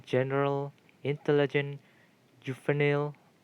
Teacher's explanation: the basic pattern is structured with anti-penultimate stress